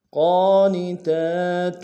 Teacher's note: قاف کے اوپر کھڑا زبر ہے، موٹا ادا کریں گے، کھڑا زبر کو ایک انداز میں کھینچیں گے